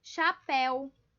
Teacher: A última mais forte, que é o pel, certo? Terminou em el, acentuei.